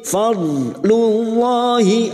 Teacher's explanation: lam jalalah yang sebelumnya dhamma kita baca tafkim